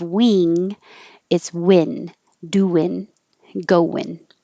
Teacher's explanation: You can say perfectly doing, going, or casually take off the G and change the vowel to I.